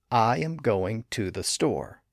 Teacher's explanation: I actually put an extra emphasis on the word I the first part of going the word to and the word store · The words and syllables in between include am and the, and they're not stressed.